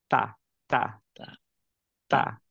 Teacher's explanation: তা আমাদের টাংটা টাচ করছে কি, tip of the tongue touch করছে গামের এই তা জায়গাটায়